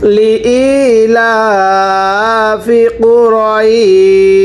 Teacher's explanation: আবারও লি ইলাফি, লি ইলাফি কুরাইশ। ওয়াকফের কারণে এই শিনের নিচে দুই জেরকে বাদ দিয়ে পড়তে হবে কুরাইশ